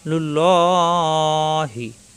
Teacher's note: আল্লাহ শব্দের লামের ডানে পেশ এবং জবর আসলে ল হয়, পুর হয়, মোটা হয়, লুল্লহি। এখানে অক্ষ করলে ল 3 আলিফ টান হবে, 3 আলিফ টানে হায় এসে অক্ষ হবে, অক্ষ করলে লাস্টের অক্ষরে ছাকিন হয়ে যায়, লুল্ল।